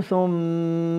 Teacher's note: هذه الميم مشددة فيها غنة